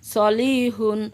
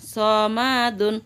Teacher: সদ সামনের নিচের দাঁতের আগা থেকে শীর্ষসহ মোটাভাবে আদায় হবে